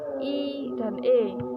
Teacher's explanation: vokal yang diucapkan dengan bentuk bibir tidak bulat atau terbentang lebar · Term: vokal tak bulat